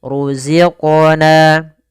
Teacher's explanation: Kemudian di sini ada mad thai. Kasr bertemu dengan ya sukun panjangnya dua harakat